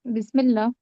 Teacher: बा को सीन से मिला के पढ़ेंगे क्योंकि सीन पे साकिन है।